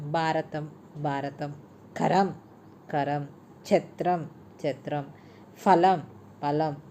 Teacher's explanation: మహా ప్రాణానికి బదులు అల్ప ప్రాణం వాడే దోషం